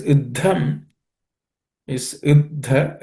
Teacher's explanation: the dha, which is the second letter in this compound letter, is aspirated, but it's a fourth letter, the preceding one being the third letter.